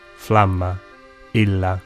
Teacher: Double consonants were pronounced long just as they still are in Italian.